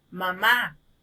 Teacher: emitiendo cuando estamos pronunciando la palabra por ejemplo este decimos mamá al pronunciar esta palabra entonces oímos que la fuerza de voz está en la última sílaba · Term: la mayor fuerza de voz